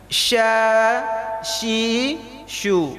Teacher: secara makhraj huruf shin itu di tengah. Jadi tidak ada urusan dengan mulut bagian depan.